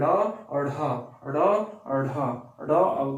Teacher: उच्छिप्त व्यंजन क्या है, जो जीव की झटके से यानी जीव की मदद से जो यानी कि वर्ण उत्पन्न होते हैं, जो वर्ण बोले जाते हैं, जैसे ड अढ़ ड अढ़ इसको बोल के आप देखिए ये कहां से, तो जीभ के झटके से यानी नीचे से निकलते हैं, इसे हम उच्छिप्त व्यंजन कहते हैं